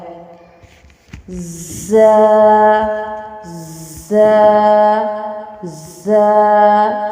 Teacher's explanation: ز، ز، ز، سیٹی والا حروف ز۔ زبان کی نوک جب ثنایا سفلی کے کنارے سے ٹکرانے کے ساتھ ثنایا علیہ سے بھی لگے تو ز ادا ہوتا ہے۔